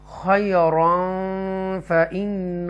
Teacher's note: تنوین کے بعد اخفا لیٹر فا آ رہا ہے، تو یہاں پر گنہ ہوگا